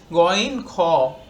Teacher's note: কণ্ঠনালীর শেষ অংশ থেকে উচ্চারিত হয়